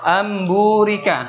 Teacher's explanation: ketika nun sukun atau tanwin bertemu dengan huruf ba ya huruf ba maka nun sukun nya hilang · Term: iqlab